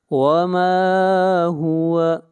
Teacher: ما کو کھینچ کر پڑھیں گے ایک الف کے برابر، یہاں پر مد اصلی ہے، الف مدہ ہے.